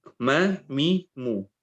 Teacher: Tapi mim, kenapa mim kok bisa mengalir suaranya? Karena lewat hidung. Hidungnya bolong.